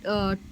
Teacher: जीभ की नोक वायु कोष ऊपरी सामने के दांतों के पीछे उबड़ खाबड़ भाग को छूती है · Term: वर्गीय